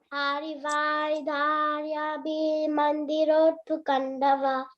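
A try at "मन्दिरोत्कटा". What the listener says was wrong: Mandi Toru. It's not Mandi Rotu. T is first, right? Mandi Toru Khandava. Yes, Mandi Toru. T is first, so Mandi Toru Khanda.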